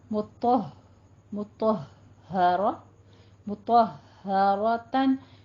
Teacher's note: हा के ऊपर शद्दा है, तशदीद है तो सख्ती के साथ 2 दफा हा को अदा करना है। पहला हा साकिन, दूसरा हा मफ्तूह पढ़ेंगे।